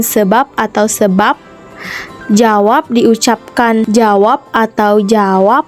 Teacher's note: direalisasikan sebagai bunyi B atau F apabila berada pada posisi sebagai koda pada sebuah silabel. Misalnya sebab diucapkan sebab atau sebab, jawab diucapkan jawab atau jawab. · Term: Fonem B